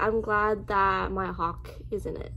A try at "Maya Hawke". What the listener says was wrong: Yeah, but you like combined the word. So Maya Hawke. Maya Hawke. You said I'm glad Maya Hawke is in it.